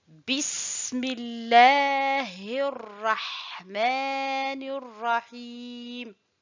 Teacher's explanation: Je dis bismillahi et non pas bismillah. Et le ra ici, il est emphatique parce qu'il porte une fatha